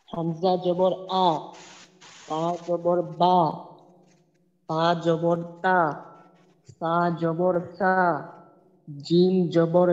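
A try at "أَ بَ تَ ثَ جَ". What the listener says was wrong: আচ্ছা, উচ্চারণ ঠিক আছে, কিন্তু আরেকটু তাড়াতাড়ি যদি উচ্চারণটা করা হয় তাহলে আরো সুন্দর হবে। যেহেতু হরকতের উচ্চারণ তাড়াতাড়ি করতে হয়। তা জবর সা, জিম জবর যা, হা জবর হা, অল্প সময়ের ভিতরে করব, যেন একটু টান না হয়।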